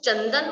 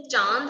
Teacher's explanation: जब हमने चंदन बोला तो सिर्फ क्या आया? अनुस्वार। लेकिन हमने जब चांद बोला तो क्या आया? अनुनासिक।